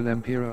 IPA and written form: lɛmˈpɪrə (lempira)